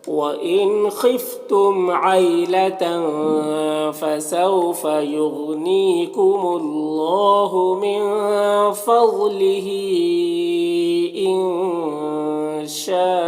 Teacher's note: غین کو پر پڑھیں گے، حروف مستعلیہ میں سے۔ نیم یا مدہ ہے، 1 الف کے برابر کھینچیں گے۔